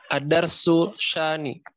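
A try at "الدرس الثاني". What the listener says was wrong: Bukan sa, fa. Ad-darsu tsani. Ad-darsu tsani. Langsung masukkan ya. Ad-darsu tsani.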